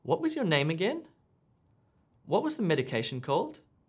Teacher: if you're asking for repetition or clarification we use slightly rising intonation